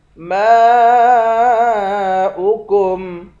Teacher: ان اصبح، صاد کو بھی موٹا پڑھیں گے۔ ماؤکم، میم کے بعد الف ہے، اس الف پر مد ہے، اس مد کو 5 الف کی مقدار کھینچ کر پڑھیں گے